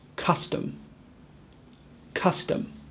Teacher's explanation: the schah is a very short unstressed uh sound · hopefully you can hear that the first sound is more stressed and lasts for a longer time that's how I know it's a short U and not thewwa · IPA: ə